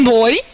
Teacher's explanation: Nós temos dois tons vocálicos na mesma sílaba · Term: ditongo